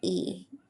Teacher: When we pronounce E, our lips are widely spread as if we're our jaw jaw is high and closed and the tongue is at the highest front top of the mouth. This is considered a tense vowel.